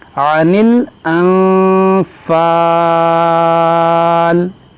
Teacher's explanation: अलिफ मद्दा के बाद यहाँ पर आर्जी सुकून आ रहा है रुकने की वजह से, तो यहाँ पर मद्दे आरिज़ का कायदा लगेगा।